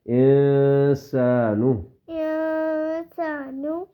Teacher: نون کی آواز کو ہلکا سا ناک میں 1 سیکنڈ کے برابر چکوائیں گے، 1 الف کے برابر. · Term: اخفا